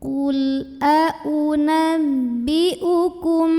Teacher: Hai gula unabbiukum kemudian di sini ada hukum Ikhfa Syafawi karena ada mim sukun yang bertemu dengan huruf ba maka cara baca mim sukun nya adalah didengungkan kalau kita menggunakan yang versi rapat bibir maka rapat bibirnya itu